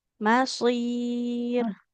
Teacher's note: Jadi dia yang tebal hanya shotnya saja. Huruf mimnya tetap tipis.